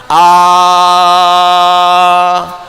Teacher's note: kalau Anda mengucapkan a, nggak ada halangan